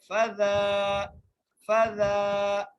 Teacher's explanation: اچھا زال کے اوپر کھڑی زبر کا سائن آ گیا ہے تو کھڑی زبر آنے کی وجہ سے ہم کیا کریں گے؟ زال کو 1 الف کی مقدار کھینچ کر پڑھیں گے